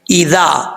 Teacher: ذال جو ہے بغیر سیٹی کے ساتھ پڑھا جائے گا، اس میں سیٹی نہیں آئے گی